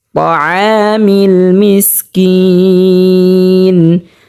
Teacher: তাআমিল আ স্পষ্টভাবে উচ্চারণ করতে হবে হলকের মধ্যখান থেকে